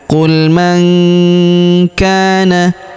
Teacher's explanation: Huruf nun sukun bertemu huruf k. Maka nun sukunnya melebur ke huruf k. Kita baca dengung dan samar. Dengungnya kita tahan dua sampai 3 harakat ya.